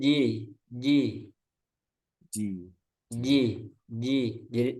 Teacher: jadi dirapatkan di tengah lidahnya itu ditempel ke langit-langit itu nempelnya enggak ada Cel engak ada cela udara j j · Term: Jim